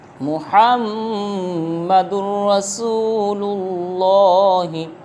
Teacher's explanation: محمد پر تو غنہ ہوگا میم مشدد میں، لیکن را پر ہم غنہ نہیں کریں گے، کیونکہ تنوین کے بعد یہ محمد کی دال پر دو پیش ہیں، دو پیش کو تنوین کہتے ہیں، اس کے بعد را آ رہا ہے، ہوگا ادغام لیکن بغیر غنہ کے ادغام ہوگا۔